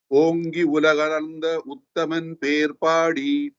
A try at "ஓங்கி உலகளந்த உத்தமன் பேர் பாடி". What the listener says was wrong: It's not bear, it is pear. Perpadi.